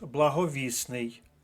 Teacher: прикметник благовісний по-перше зникає літера т - це спрощення приголосних а по-друге міняється наголос